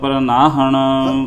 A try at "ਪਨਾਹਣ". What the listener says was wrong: ਪ੍ਰਨਾਹਣ ਰਾਰਾ ਵੀ ਲੱਗਿਆ? ਪਨਾਹਣ ਸੰਤਾਂ ਨੂੰ ਪਨਾਹ ਦੇਣ ਵਾਲਾ ਪਰਮੇਸ਼ਰ ਹੈ, ਤਾਂ ਕਰਕੇ ਸੰਤ ਪਨਾਹਣ।